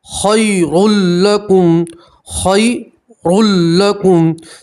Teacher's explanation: यहाँ भी तनवीन का लाम के अंदर इदगाम होगा मगर गुन्ना नहीं होगा